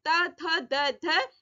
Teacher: दांतों के पास से आवाज आ रही है।